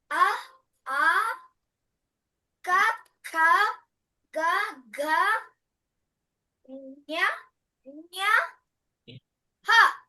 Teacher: ఆ యొక్క శబ్దము గొంతులో నుంచి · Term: కంటవ్యః